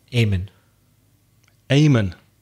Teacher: in Ireland we're not too good about pronouncing ing s they tend to come out as in